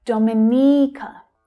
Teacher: Now be careful here, the stress is actually on the third syllable.